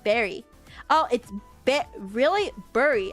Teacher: Bur and berry sound the same in a lot of American regions.